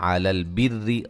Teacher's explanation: را کو باریک، را کے نیچے زیر ہے، را مشدد ہے